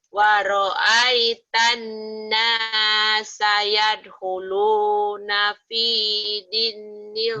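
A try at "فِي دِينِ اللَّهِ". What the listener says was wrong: Dinya panjang. Fi dinillah tipis satu, jangan dinilboh. Dinillah kan 8 lalanya dibaca tipis karena sebelum apa lu baris Allah. Fi-nya panjang. Fi dinillahi afwaja.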